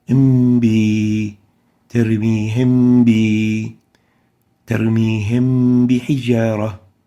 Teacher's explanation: So it sounds as if it is hidden. We hide and weaken the pronunciation of the Meem, Sakinah, from its oral articulation zone. Actually, we imprison it there. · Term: Ikfaa